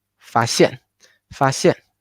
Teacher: Fa, and then the xian we need to put a stress. It need to be higher than the end of tone 1.